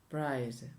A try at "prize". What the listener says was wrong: The Spanish people don't know how to say the Z at the end of the words, so they will all say price for both. Prize. Prize. Prize. What does that sound like? Like a snake. And prize. Like a bee.